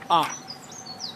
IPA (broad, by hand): ʌ